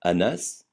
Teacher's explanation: le N se prononce ne comme dans canari jamais nasalisé comme dans éléphant